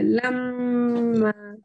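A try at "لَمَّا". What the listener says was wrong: একটু মাত কম হয়ে যাচ্ছে বাবা, মাত তার গুণ না একই ধরনের।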